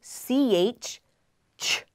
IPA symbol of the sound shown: tʃ